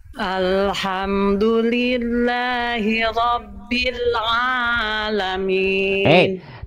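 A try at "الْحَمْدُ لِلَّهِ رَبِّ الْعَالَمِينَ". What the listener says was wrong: Tapi jangan jadi kepanjangan. Alamin, enggak. Alamin, 2 harokat.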